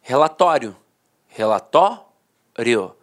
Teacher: a pronúncia paroxítona terminada em ditongo falava assim ó relatório relatório a penúltima sílaba a sílaba mais forte · A penúltima sílaba era a sílaba mais forte e a última, de fato, perdia a força.